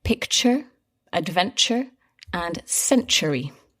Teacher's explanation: all these words have that same sound where the t becomes a little bit like a ch sound